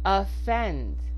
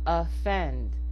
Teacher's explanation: The O is being reduced to the schwa